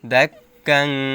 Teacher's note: তানবিনের পরে ইকফার হরফ দাল আসছে এজন্য গুন্নাহর সহিত গোপন করে পড়তে হবে